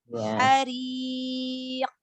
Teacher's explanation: Ro kasroh ya, ro berharokat kasroh dibaca tipis. Ada huruf terakhir, huruf qaf, huruf qolah. Karena berada di akhir maka qolah kubra.